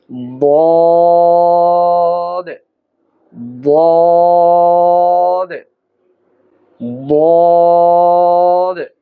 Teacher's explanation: জিহ্বার কিনারা উপরের মাড়ির দাঁতের গোড়ার সঙ্গে লাগিয়ে এর উচ্চারণ করতে হবে।